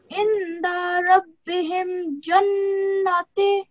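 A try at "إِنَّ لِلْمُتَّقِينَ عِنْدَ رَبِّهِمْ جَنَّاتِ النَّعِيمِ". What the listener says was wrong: No, it's not jannati. It is not jannati. It's noon with the fatha. Noon with fatha kaima. Okay, this is it's a jannatin. This is vertical fatha. You have to take 2 seconds. Okay, so jan. You have to make nasal sound first.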